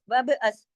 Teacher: وبعث با پہ کلکلا ہوگا